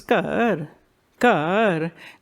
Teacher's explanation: Punjabis may say they have a slot for it, but they don't pronounce it as a gha. They don't say ghar, it says kar, kar.